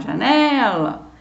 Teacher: você tem a palavra janela, que não é acentuada, e você vê que a sílaba tônica é a penúltima, é só você chamar janela, você já vai perceber que a penúltima é uma palavra paroxítona.